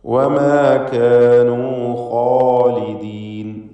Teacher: വമാ എന്ന് മീമിൻ്റെ അലിഫിനെ തർക്കീഖ് ചെയ്യണം. കാനൂ ഇവിടെയൊക്കെ അലിഫുകൾ തർക്കീഖോടുകൂടി ഉച്ചരിക്കുക.